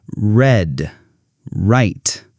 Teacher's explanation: For the R sound, your tongue doesn't touch anything. It's more relaxed and curved.